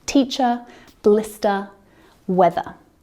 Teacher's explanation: we don't pronounce the r r sound at the End of Words like teacher blister weather · So that final sound is a schwa